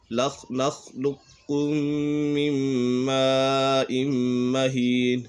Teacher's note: میم ساکن کے بعد دوسری میم آ جائے تو میم ساکن میں ادغام شفوی ہوگا، یعنی غنہ کر کے پڑھیں گے